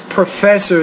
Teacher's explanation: professor so put stress in the second syllable